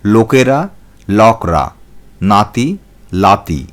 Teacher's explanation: র এবং দন্তন্য ধ্বনির জায়গায় ল ধ্বনির ব্যবহার দেখা যায়